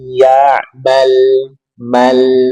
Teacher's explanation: lam dari posisi lidah hingga ke akhir ujungnya bertemu dengan gusi atas di hadapannya